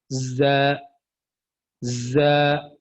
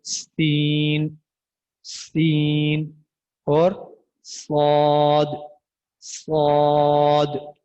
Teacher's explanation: इन हरूफ को अदा करते वक्त आपने शुरू में सीटी की आवाज निकालनी है